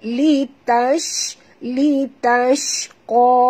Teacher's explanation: shim ni sifatnya tafashi, angin yang keluar banyak